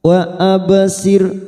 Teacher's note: arok sukun yang sebelumnya ada kasroh, kita baca tipis